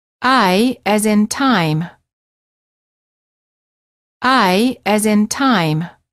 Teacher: and they close a bit when moving to the it position the tongue is relaxed and it moves from a flat to high position